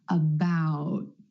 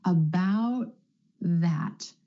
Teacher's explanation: air puff for the held T you just skip step three you hold the tip of your tongue against the ridge behind your top front teeth and you don't release any air